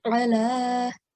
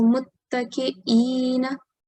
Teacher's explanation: So the sound of Ain and Hamza is different. Okay, so Ain comes from middle of the throat, ala, whereas Hamza has a very soft sound. It has a slight jerk.